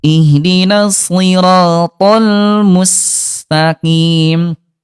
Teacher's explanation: huruf shad dia tetap dibaca tebal ayah bunda walaupun dia kasroh ya